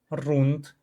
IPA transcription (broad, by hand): runt